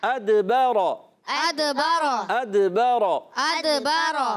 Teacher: حمزہ کو دال سے ملائیں گے، دال ساکن ہے، کلکلا ہوگا، آواز لوٹ کر آئے گی